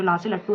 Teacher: जो ला से लट्टू है ना वो पार्श्विक ध्वनि है